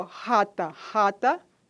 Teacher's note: ocorre fricção audível na região velar